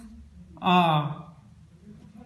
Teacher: इसके उच्चारण में मुंह पूरा खुला रहता है, हम इसको बोलते हैं जब उच्चारण करते हैं तो विवर्त स्वर का जैसे हमारा मुंह खुला रहता है एग्जाम्पल आ। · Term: विसवर्त स्वर